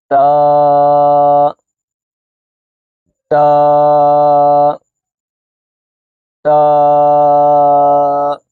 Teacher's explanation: اسی طرح جو اگلا لفظ ہے تا، حروف نطعیہ، اس کا مخارج حروف نطعیہ ہے۔ تا زبان کی نوک اور اوپر کے دانتوں کی جڑ سے ادا ہوتا ہے۔ زبان کی نوک کو اگر آپ اوپر کے دانتوں کی جڑ کے ساتھ ملائیں گے تو تا ادا ہوگا، تا تا تا۔